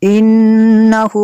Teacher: नून शद्दद है यहाँ पे गुन्ना करेंगे।